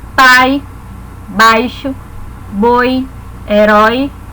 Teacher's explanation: a vogal é pronunciada mais fortemente e a semivogal mais fraca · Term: decrescente